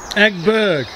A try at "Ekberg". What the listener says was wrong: Not egg. Ek. E-K. B-E-R-G. Ekberg.